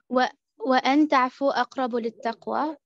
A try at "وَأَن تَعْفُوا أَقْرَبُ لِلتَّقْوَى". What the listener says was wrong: Okay, very good.